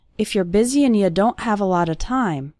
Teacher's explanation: that's very common for the word and to get reduced to just an n Sound